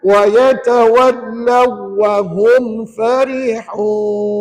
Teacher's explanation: wahum tak boleh dengung sebab kat situ tidak ada nun mati atau tanwin jumpa dengan wau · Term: tidak dengung